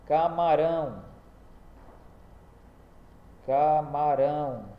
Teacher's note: Então o acento é no rão. Então, se o acento é se é na última, então ela é uma oxítona.